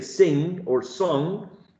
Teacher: If you say the word sing or song, and you focus on the last sound, you actually feel your nose vibrating. If you touch your nose when you say sing or song, it vibrates because a little bit of airflow goes through the nasal cavity. So if it goes through the nasal cavity, this velum is lowered, so the air can escape through the nose, through the nasal cavity, right?